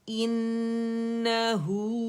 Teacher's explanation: اس کی نا فتحہ کو ظاہر کریں گے، منہ کھلے گا